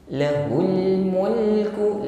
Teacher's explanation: alirkan sebagian bunyi huruf lam jangan ditahan atau dipantulkan ul jangan ditahan ya dan juga tidak boleh dipantulkan jangan alirkan